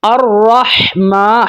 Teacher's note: آگے دیکھیں، الرحمن، را کے اوپر زبر ہے تو را کو موٹا کر کے ادا کریں گے۔ الرحمن، ہا کو ٹھنڈی آواز کے ساتھ، اور یہ ہا حلق کے درمیان والے حصے سے ادا ہوتی ہے۔ الرحمن، میم کے اوپر کھڑی زبر ہے، ایک الف تک اس کو لمبا کریں گے۔